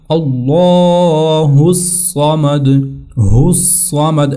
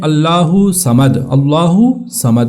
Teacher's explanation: ہا کو آپ نے فوراً سواد کے ساتھ ملانا اور سواد کو پھر سختی کے ساتھ پڑھنا کیونکہ اس کے اوپر شدہ ہے، اور شدہ اور تشدید کا معنی یہی ہوتا ہے کہ آپ نے اس کو سختی کے ساتھ پڑھنا ہے۔